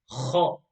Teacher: The letter kha, when it has a Fathah, the sound is kha. And do not forget, this is a full mouth letter.